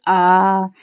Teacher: जिन स्वरों के उच्चारण में मुख द्वार क्या होता है वो पूरा खुलता है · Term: विवृत